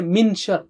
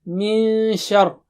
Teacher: there is ikhfar, you should hide noon there. من شر, you don't say min shar, no.